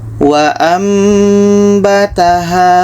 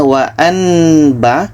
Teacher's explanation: Bunyi nun tukar ke mim. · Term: iqlab